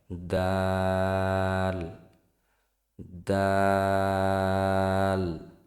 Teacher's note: দাল উচ্চারিত হয় জিহ্বার আগা সামনের উপরের দুই দাঁতের গোড়ার সঙ্গে লাগিয়ে উচ্চারিত হয়। দাল। আবার বলি, জিহ্বার আগা সামনের উপরের দুই দাঁতের গোড়ার সঙ্গে লাগিয়ে উচ্চারিত হয়।